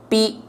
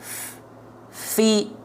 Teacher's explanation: yang nempelnya apa bibir atas dan bibir bawah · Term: huruf P